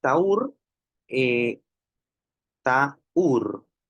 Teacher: Hay un hiato porque hay una vocal cerrada tónica, la U. Y a esa vocal cerrada tónica le precede una vocal abierta átona que es la A. Entonces, este es justamente un caso de hiato acentual.